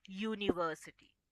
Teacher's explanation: Consonant sound ने, that is of y. Though we are using the letter u, we are starting the sound with y. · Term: sound of a consonant